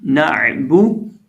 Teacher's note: یہ جو عین ہے اس کو ہم بیچ حلق سے ہی ادا کریں گے، اور با کا مخرج سمپل ہے دونوں ہونٹوں کو ملانے سے